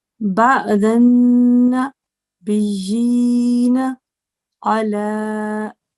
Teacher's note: you have to remember to hold the nasal sound, the ghunna, for 2 seconds